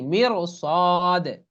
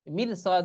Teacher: সোয়াদ যদি থাকে, তাহলে সেই রকে মোটা করে পড়তে হয়। যেমন পড়তে হবে কি, মির ও সাদ, মিম রাজের মির, মির সাদ এরকম পড়া যাবে না, মির সাদ মোটা করে।